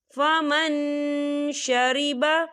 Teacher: بنہر فمن شریب، یہ دیکھیں فمن، یہاں نون ساکن ہے اور نون ساکن کے بعد شین آ رہا ہے، شین جو ہے اکفا کا ورڈ ہے، تو ہم یہاں اکفا کریں گے، نون ساکن کی آواز کو ناک میں چھپائیں گے